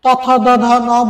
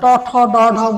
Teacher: তারপরে বলছিলাম ট, ঠ, ড, ঢ, মূর্ধান্য, এটা হচ্ছে মূর্ধান্য, অর্থাৎ এটা উচ্চারণ করতে গেলে জিহ্বার অবস্থান হয় হচ্ছে উল্টে যায়, ইউটার্ন হয় পুরোটা এরকম, অর্থাৎ ত, থ, দ, ধ, ন বললে হচ্ছে জিহ্বা ফ্ল্যাট থাকে, আর ট, ঠ, ড, ঢ মূর্ধান্য, এটা পুরোটা ইউটার্ন হয়ে যায়, এরকম উল্টে যায়, এবং ওইখানে ওই মূর্ধায় গিয়ে স্পর্শ করে, যার কারণে মূর্ধান্য, এই বর্ণগুলো মূর্ধান্য, মনে রাখবে এভাবে।